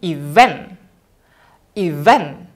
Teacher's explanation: Jadi kita ucapkannya dari bawah ke atas, dari turun ke naik gitu. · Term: primary stress